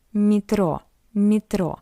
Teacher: after M we have Y. That's why M is soft.